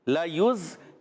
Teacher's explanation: لَيُز یا کو زا سے ملا ہے, زا سیٹی والا حرف ہے, یہاں پہلے زال تھا بغیر سیٹی والا تھا. لَيُزْلِقُونَكَ میں زا جو ہے سیٹی والا حرف ہے